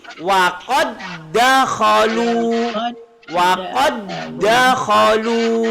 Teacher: Wa qad dakhalu, salah. Dal qalqalah hilang, walaupun dal huruf qalqalah tapi kita baca menjadi wa qad dakhalu. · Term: idgham mutamasilain